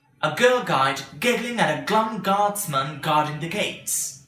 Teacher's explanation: make the gh sound plosive with lots of air but not as much as the k sound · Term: G sound